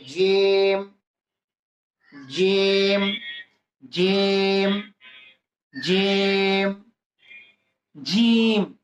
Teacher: জিমটা উচ্চারণ করার সময় জিহ্বার মাঝখানটা উপরে তালুর সঙ্গে লাগবে, জিহ্বার মাঝখানটা উপরে তালুর সঙ্গে লাগাই দেন, জিম।